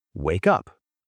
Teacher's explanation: The K moves over. It sounds like wake up. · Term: linking